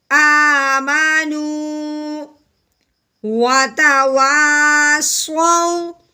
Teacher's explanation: واؤ ساکن سے پہلے زبر آ جائے اس کو ہم نے لمبا نہیں کرنا، نرمی سے پڑھنا ہے. جیسے آمانو وتواصوا، اگر یہاں پہ پیش ہوتی تو ہم نے اس کو سو لمبا کر دینا تھا، لیکن واؤ ساکن سے پہلے زبر آئے تو لمبا نہیں کرنا. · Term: لین